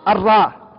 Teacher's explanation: The tip of the tongue, it trembles when pronouncing this particular letter. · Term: harf of tikrar